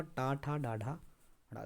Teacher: टा ठ ड ढ तो यह जो है मुर्धन्य व्यंजन में आते हैं